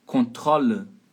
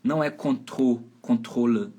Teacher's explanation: O O é aberto. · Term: vogal aberta